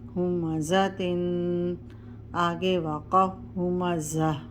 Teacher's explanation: اور جب ہم وقف کریں گے تو تا ہا میں بدل جائے گی، یعنی ہا کی آواز نکلے گی، زیر اس کی نہیں پڑیں گے۔